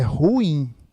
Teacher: essa palavra é um hiato né então duas vogais